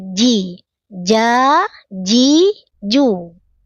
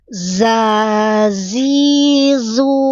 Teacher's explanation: jim tengah lidah zai ujung lidah sama-sama jahar sama-sama tertahan napas